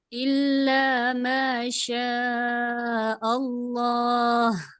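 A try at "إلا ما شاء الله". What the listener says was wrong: Alhamdulillah ya. Jadi kerasa ya penekanan di pangkal tenggorokannya.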